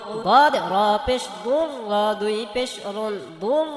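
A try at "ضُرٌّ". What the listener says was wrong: বদ মোটা করতে হবে, র মোটা। দু দু দু, এটা দু দু বললে হবে না, তার দাল হয়ে যাবে। দু দুরুন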